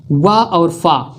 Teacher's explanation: व और फ का उच्चारण दंतोष्ठ से होता है।